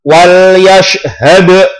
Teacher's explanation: Wal yashhad, dalnya dipantulkan karena qalqalah.